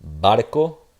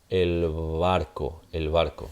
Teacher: So the stop, barco, the fricative now with the article, el barco, el barco. So it's a your lips don't fully come together.